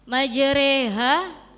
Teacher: Majreha ada bacaan imalah. Imalah ee memiringkan harakat fathah · Imalah memiringkan harokat fathah condong ke kasroh. Lalu ada ro-nya mad tabi'i.